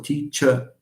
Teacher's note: That's true, because teacher, the ER of teacher, the word teacher involves the deletion of the final R. It's deleted, especially in British English. And the consequence of this is that the whole ER turns into a schwa.